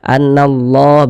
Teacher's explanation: di sini kan huruf lamnya dia tidak ada tanda bacanya jadi cara membacanya itu dari Na langsung masuk ke huruf lam yang ada tanda bacanya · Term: alif lam syamsiyah